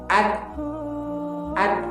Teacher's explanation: زبان جو ہے وہ اوپر کے تالوں سے چپک گئی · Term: صفت شدت